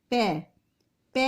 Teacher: जब हम बोलते हैं तो दोनों होठ हमारे आपस में मिलते हैं, तो इसका उच्चारण स्थान क्या है, ऊपू पद्मान्या नाम के अनुसार ओष्ठौ इसका उच्चारण स्थान है।